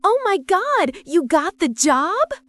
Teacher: Rising intonation. This is your question voice, but Americans also use it for excitement.